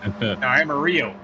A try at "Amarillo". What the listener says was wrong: No, that's not American. You're doing the Y for the double L's, so you got to do. Amarillo. No, but he says in the chat it's the American pronunciation.